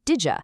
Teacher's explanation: They use assimilation to morph sounds together, turning did you into did ya